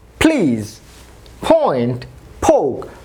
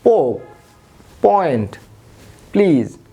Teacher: ফ সাউন্ড দিচ্ছে, অর্থাৎ অ্যাসপিরেটেড হচ্ছে। আমরা যদি অ্যাসপিরেটেড না করতাম তাহলে কি হতো পোক, পয়েন্ট, প্লিজ।